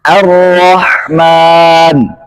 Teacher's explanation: Ini lam didghamkan ke huruf ra. Nah, masih ada nggak bacaan lamnya? Nggak ada. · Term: idgham kamil